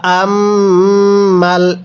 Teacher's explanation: মিমের মধ্যে গুন্নাহ করব কারণ মিমের উপর তাজিদ আছে